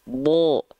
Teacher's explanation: Contohnya huruf bod. Huruf bod itu huruf tebal. Ketika dia berharokat fathah, maka dibacanya vokalnya vokal O. Bo. Gitu.